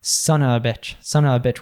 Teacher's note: We just turn into schwa together, like uh, so it can become Son uh uh bitch, son of a bitch - with a double schwa sound there in the middle